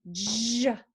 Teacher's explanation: Ch, ch, ch, ch, ch, ch. And then the J is made just like that, CH, but you turn your voice on, J, like a girl jumping, J, J.